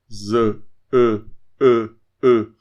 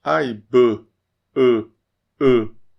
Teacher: Fica entre o som de a e e. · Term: intermediário